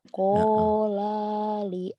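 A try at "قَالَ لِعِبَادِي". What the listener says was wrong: Kenapa lanya panjang? Kola. Kenapa lanya panjang? Lanya pendek nih gini bacanya. Kola li'a. Kola li'abihi gitu.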